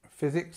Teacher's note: just remember that the stress is on the first part